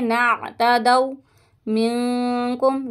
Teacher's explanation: نون ساکن کے بعد کاف آ رہا ہے اس لیے گنہ کریں گے